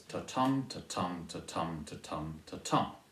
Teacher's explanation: I said that it's 10 syllables long. It's alternating soft and stressed. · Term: Iambic Pentameter